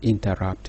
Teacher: two unaccented syllables followed by one accented one